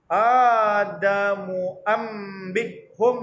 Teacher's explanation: Itulah dia iqla' menukarkan nun mati kepada huruf mim tutup mulut